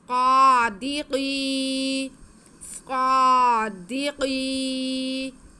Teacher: قاف حروف مستعلیہ میں سے، اس کو ہم موٹا بھی کریں گے اور کھینچ کے بھی پڑھیں گے کیونکہ یا مدہ ہے